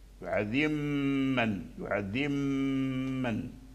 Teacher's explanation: تركز على الغنة أن تخرج من الخيشوم أي من الأنف